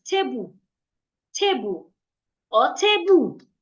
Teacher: In my language, I would just pronounce it as tebu, tebu, or tebu. I would say the two syllables with equal energy, tebu. But in English, I'm supposed to say one of these syllables louder, longer, and clearer.